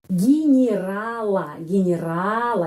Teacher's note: jadi huruf y kalau tidak mendapat penekanan menjadi huruf i ya menjadi bunyinya ya soundnya i ya kita menulis Ye tapi mengucapkan i gerala gerala ya di sini